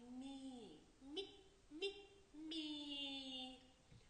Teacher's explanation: звук і завжди робить попередній приголосний звук м'яким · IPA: [м’]